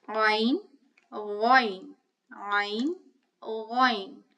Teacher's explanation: Ghayn also has a guttural sound, but not as deep as ayn.